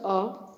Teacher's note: Number ख मध्य स्वर अ। इसके उच्चारण में जीभ के बीच का भाग ऊपर न उठकर नीचे धंस जाता है।